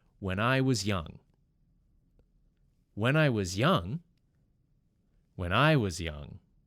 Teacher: you'll notice that the N and I come together, when I. Then the I and the W come together, I was. And finally the S and Y come together, was young.